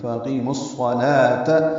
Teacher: ادغام شمسی ہوگا، بیچ میں واو الف لام نہیں پڑھیں گے. فاقیموا الصلاۃ صاد پر پڑھیں گے، لام کو دو حرکات لمبا کریں گے، واو نہیں پڑھیں گے.